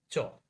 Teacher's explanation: অঘোষ অল্পপ্রাণ ধ্বনি কোনটি? চ